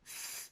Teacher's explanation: It's a dental sound, meaning that the articulators involved are the tongue going between your upper and lower teeth. So, in order to produce the th or th sound, we need to place our tongue between the teeth, leaving a tiny little gap between the upper teeth and the tongue, which is where the air will come out. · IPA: /θ/ and /ð/